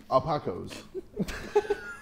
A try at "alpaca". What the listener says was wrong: Yeah, it's an alpaca. It's very similar, but the last vowel at the end is an A, not an O.